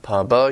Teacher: your lips are stopping the airflow and then releasing the air